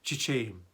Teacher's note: açan çiçeğim Burada yine çiçeğim derken ğ dikkat edelim çiçeğim iyi Ğ yi bastırarak ifade etmiyoruz düşürüyoruz Bir önceki sesli harfi bir ses uzatıyoruz